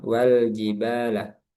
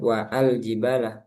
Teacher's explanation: Nah, di sini ada catatan tanda kepala shad ee yang berada di di atas huruf alif bukan harakat domah melainkan raksu sh yaitu kepala shad istilahnya rsu shad yang mana alif ketika berada di tengah kalimat tidak dibaca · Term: hamzah wasal